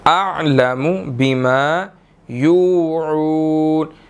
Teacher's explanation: یو واو مدہ ہے 1 second لمبا کریں گے، عون پھر واو مدہ ہے اس کو 1 سیکنڈ لمبا کریں گے، جی نیکسٹ آیت۔